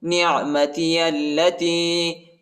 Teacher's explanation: الف نہیں پڑھا جاتا، الف کے اوپر حرکت نہیں ہے، ٹھیک ہے. اور یا جو ہے یا سکینہ بھی ہے اور چھوٹا مد بھی آئی ہے، اس کو تقریباً 2-3 سیکنڈ تک کھینچیں گے